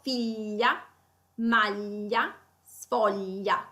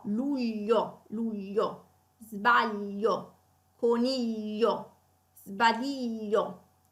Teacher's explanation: allora la pronuncia è quella della laterale palatale sonora